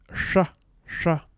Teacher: the retroflex sh fricative